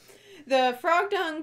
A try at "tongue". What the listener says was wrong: Tongue, not dung. You said dung.